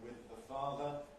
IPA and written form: wɪð ðə ˈfɑːðə (with the father)